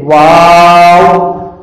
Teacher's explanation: الف کے بعد والے واو کی آواز بالکل گول ہونے چاہیے اور آواز فوراً بند ہو جائے